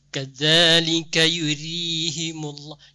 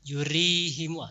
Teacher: perlu diperbaiki ro tipisnya, ro baris bawah tipis ya dibaca. Kadzalika yurihimullah, jangan yurihimu, terlalu tebal ya.